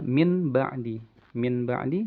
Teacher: Jadi mim ba'di pakai dengung juga ya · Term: iqlab